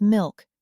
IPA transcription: mɪlk